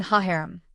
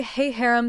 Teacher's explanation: When it's attached to a noun that begins with a vowel, as in the case of harem, mountains, the ha changes to he. So, instead of saying ha harem, we say hey harem to avoid two vowels sounding together